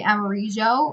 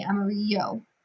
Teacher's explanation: And that's just because in Spanish, those the J sound and the Y sound, they're interchangeable. They're allophones.